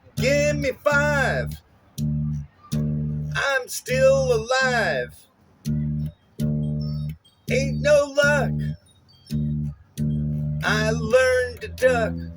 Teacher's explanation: ta tum, unstressed, stressed, unstressed, stressed